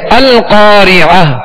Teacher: تو اب یہ جو گول تا ہے جب بھی کلمے کے آخر میں ہے اس پر وقف کیا جائے تو اسے ساکن کر دیں گے اور تا نہیں پڑھیں گے بلکہ ہائے ساکنہ سے بدل دیں گے